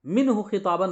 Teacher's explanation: نون کی آواز کو ظاہر کر کے بغیر غنہ کے جلدی پڑھیں گے، منہ خطابن پڑھیں گے، منہ خطابن نہیں پڑھیں گے۔ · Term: اظہار